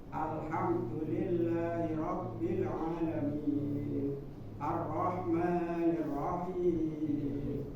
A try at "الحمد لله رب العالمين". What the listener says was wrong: Cuma satu ya, untuk catatan dari Ana, jangan ketika membaca itu diputus atau saktah ya. Langsung masuk ke alhamdu. Coba alhamdu. Nah, nggak usah berhenti di situ, nggak Nah, alhamdu. Nah, langsung masuk alhamdu.